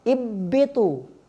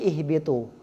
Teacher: Huruf ba di mana? Bibir. Ha di mana? Pangkal tenggorokan. Ihbitu, ha sukun, ba. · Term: mutaba'idin